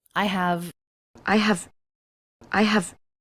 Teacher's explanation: she doesn't reduce the word have. She says the H sound and the V sound.